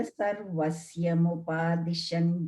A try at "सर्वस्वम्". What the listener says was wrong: So again, I think now you said ya again. No, Sarvasvam. Mata Sarvasvam.